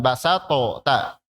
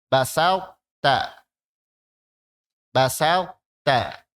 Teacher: Tapi to disisakan sifatnya. Salah satu sifatnya. Sifat tebal. Jadi kita seperti mengucapkan to pas bunyi ta.